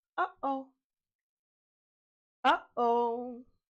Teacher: Now let's try glottal stop. This is when you cut off the airflow by briefly closing the vocal folds.